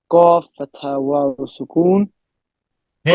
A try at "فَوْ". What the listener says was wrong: This one is not قاف.